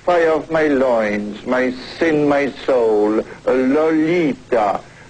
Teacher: the first syllable of her name sounds more like an a sound than the o sound